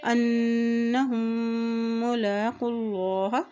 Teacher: جب میم کے اوپر بھی شد آتی ہے تو وہاں پر بھی غنہ ادا کیا جائے گا